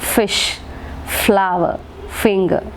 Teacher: The teeth, the upper teeth becomes the passive articulator, very good, and the lower lip becomes the active articulator. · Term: labiodental sounds